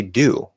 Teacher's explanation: maybe even a little bit of uh instead of ooh but not into a full schwa